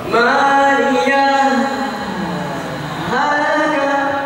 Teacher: Berhenti sejenak, tahan nafas, dua ketukan, langsung menyatu ke huruf H yang kedua. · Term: sattah